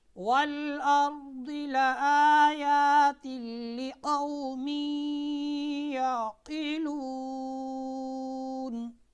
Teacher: نون تنوین کو لام کے ساتھ ملا دینا ہے، ٹھیک ہے، اس کو ادغام تام کہتے ہیں، اور یہ بغیر غننے کے ادا ہوگا